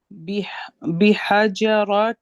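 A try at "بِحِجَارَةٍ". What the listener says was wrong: بحیجا, یہ جو صبر ہے نا یہ جیم کا ہے, یہاں ہا کے نیچے دیر ہے. بحیجا, جا الف مدہ ہے.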